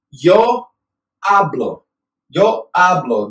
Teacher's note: This A receives the emphasis, so I talk.